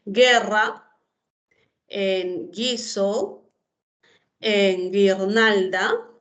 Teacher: No hay grupo vocálico porque la U no se pronuncia. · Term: dígrafo GU